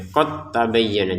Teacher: huruf dalnya di sini sudah kita tidak baca pantulannya karena sudah bertemu dengan ta, jadi dimasukkan ke ta.